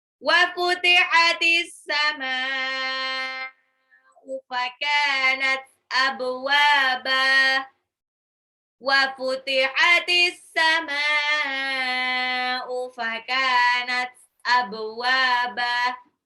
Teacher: Fakanat kafiyah mad tabi'i 2 harokat abwaba ba-nya qalqalah pantul wawunya mad tabi'i